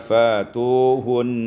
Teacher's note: Pada ayat 222, fa'tuhun, ibdalul hamzatil alifan, ibdalul hamzati alifan ditukar hamzah dengan alif sehingga kita baca fatuhun.